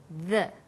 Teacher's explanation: when you say the, your tongue is between your top and bottom teeth, like this, the.